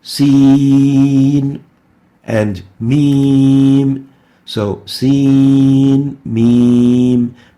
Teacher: And the mim, this mim, is practically pronounced as if there are three letters, and the middle letter of the mim has a ya, a mad letter ya. So we need to elongate the two yas, the ya in the middle of the sin and the ya in the middle of the mim. So they are both to be elongated, to be lengthened, to have mad.